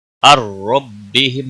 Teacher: غنہ نہیں کریں گے. الربہم نون ساکن کے بعد حروف یرملون کا را آیا ہے. ادغام ہوگا بلا غنہ